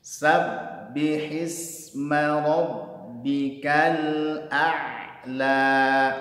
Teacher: Ainnya mengalir sedikit, ya, karena dia punya sifat tawassul.